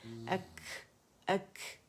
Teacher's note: کاف جو ہے یہ کیونکہ ساکن ہے اس کے اوپر، تو اس کو جب ادا کریں گے تو ہمس واضح ہوگا، اس میں شدہ ہے کاف کے اندر.